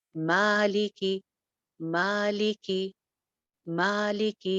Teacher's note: ما، اب دیکھیے ایک الف لمبا، لی اور کی سنگل حرکتیں ہیں، صرف زیر ہے، تو لہٰذا ما کے مقابلے میں لی اور کی حرکت آدھی ہے